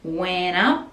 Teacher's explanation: Went up, so connecting these two words, went up, and we don't really pronounce the T in went. Went up, and up the P as well, we just put the lips together.